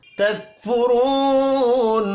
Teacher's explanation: काफ साकिन पर कलकला नहीं करना. रॉ को पेश की वजह से पुर पढ़ेंगे. वाव मद्दा एक अलिफ के बराबर खींच कर पढ़ा जाएगा.